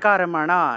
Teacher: শরীর যাত্রাপি, যাত্রা আছে, উচ্চারণ হবে যাত্রা, শরীর যাত্রাপি চোতে ন প্রসিদ্ধে, ধয়ের সাথে দয় ধয় আছে, তাহলে দিয়ে উচ্চারণ হবে, ন প্রসিদ্ধেদ কর্মণা, কর্মণা, মূর্ধন্য আছে, তাহলে না উচ্চারণ হবে, জিহ্বা উল্টে ন উচ্চারণ, তাহলে কর্মণা, ন প্রসিদ্ধেদ কর্মণা, এইভাবে উচ্চারণ হবে।